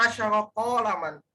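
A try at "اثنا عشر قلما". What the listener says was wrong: Kok kolaman kok panjang?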